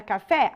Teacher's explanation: a palavra café a sílaba tônica é a última